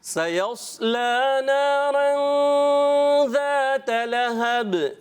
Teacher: ذال کی ادائیگی کلیئر کوشش کریں، زا نہ ہونا چاہیے، زا ہو جائے گا خراب ہو جائے گا۔